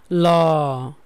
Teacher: পার্শ্বীয় ধ্বনি হলো ল। লটা উচ্চারণের সময় বাতাস পার্শ্ব জিহ্বার দুই পাশ দিয়ে বের হয়